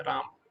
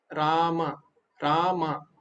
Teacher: मा पूरा बोलना होगा आपको बंद नहीं करना